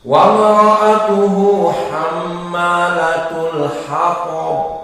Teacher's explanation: Maka inilah ta mufakhamah, dan ba di saat diwaqafkan di sini maka dia menjadi qalqalah. Dan qalqalahnya ba termasuk qalqalah al-wusqa.